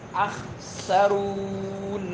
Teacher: ناک میں آواز نہیں لے کے جانی ہے ، اخسرون نہیں کہنا ہے، اخسرون، منہ سے آواز نکلے، وَإِنَّكَ،